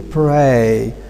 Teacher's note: R, we know, is a voiced sound, but when it is preceded by P here, it becomes devoiced.